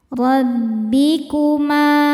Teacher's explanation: Huruf ra dibaca secara tafkhim karena berharokat di atas yaitu harokat fathah. Cara bacanya ditebalkan.